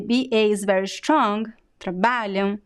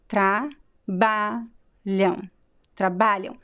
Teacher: So the AM at the end is very weak because it's a weak syllable. The BA is very strong, trabalham, and the first syllable is also weak. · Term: stressed syllable